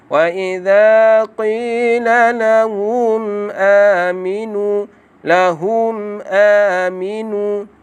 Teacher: mim mati bertemu dengan huruf hamzah. Jadi tuan-tuan, di sini kita kena baca dengan jelas dan terang.